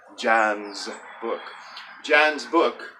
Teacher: that apostrophe s that sounds like a Z in my American English